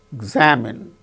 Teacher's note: in the case of the word examine second syllable gain stress